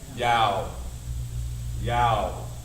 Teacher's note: Ah turns into ow. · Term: rule of diphthong